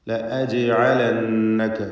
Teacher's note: ജീമിൻ്റെ സുക്കൂൻ ഖൽഖല സുഗ്റ നൽകി ഹറക്കത്ത് പോലെ ശബ്ദത്തെ ചലിപ്പിക്കണം.